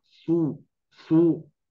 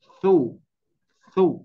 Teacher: Nah jadi ini betul-betul harus tipis ya ibu-ibu sekalian banyak yang mengucapkan masih agak tebal